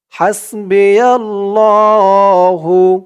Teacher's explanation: খাড়া জবর ধরে এক আলিফ টান দিয়ে পড়তে হবে